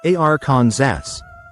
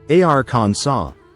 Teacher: In French, that final S is silent.